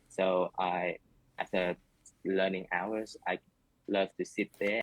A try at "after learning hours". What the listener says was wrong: Learning hours, learning hours, learning hours. So the sentence stress is it is slightly off. It's not perfectly natural sentence stress.